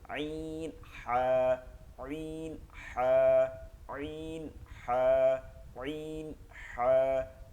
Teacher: হলকের মধ্যখান হইতে, মধ্যখান হইতে আইন হা, গলার মধ্যে চাপ দিয়ে আইন হা, আইন হা, আইন হা, আইন হা।